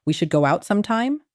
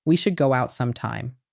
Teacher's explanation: you end your sentences with a rising inflection that makes everything you say sound like a question. When you say, "We should go out sometime?" with that rising tone, you aren't making a suggestion. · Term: up-talking